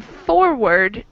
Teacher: in forward, we put more stress on for. So our emphasis is on the first syllable in forward, not reward.